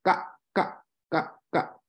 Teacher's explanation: But if you say ka correctly with your hand in front of your face, say ka, ka, ka, ka. It's like a little clucking sound in the back of your throat. And that is called unaspirated, meaning you will not feel a little burst of air come forth.